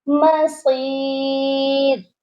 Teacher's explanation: اور جب ہم یہاں پر رکیں گے، را جو ہے یہ موٹی ہے، لیکن جب ہم یہاں وقف کر رہے ہیں تو ہم نے را کو باریک پڑھنا ہے